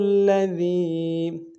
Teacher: ذال کو یا کے ساتھ ملانا ہے، یا مدہ ایک انداز میں کھینچیں گے، ذال کو باریک ادا کریں گے